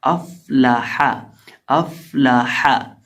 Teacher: اور ہا کو بیچ حلق سے ادا کیا جائے گا